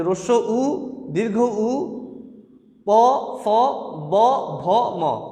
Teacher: এই বর্ণগুলো উচ্চারণের সময় ঠোঁট থেকে উচ্চারিত হয় বলে এদেরকে বলা হয় ওষ্ঠবর্ণ